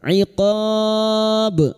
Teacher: iqab bertemunya mad dengan huruf hidup yang dibaca waqaf. Mad arid li sukun 4 harokat kita panjangkan. Dan huruf ba yang mati karena waqaf sesudah mad kita pantulkan dengan kuat qalqalah kubra.